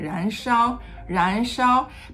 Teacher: ends very high and then sha is a tone one but usually medium to medium high but after Ren sha becomes very high